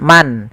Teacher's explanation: Izhar itu suara nunnya jelas, suara n-nya jelas.